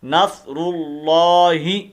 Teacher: یہ لفظ اللہ کی ہا ہے، اس کو ہم نے لمبا نہیں کرنا · لفظ اللہ سے پہلے اگر زبر یا پیش آ جائے، جس طرح یہ پیش آئی ہوئی ہے، تو اس وقت لفظ اللہ کے لام کو کیا کرتے ہیں؟ پر کر کے پڑھتے ہیں